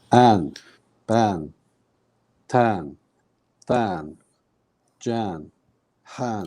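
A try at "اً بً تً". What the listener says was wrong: Okay, so we're pulling it. We're not pulling it that much. We're trying to cut it. Yeah, in English, if you've got like one A, we want about a quarter of that. So an, ban, tan.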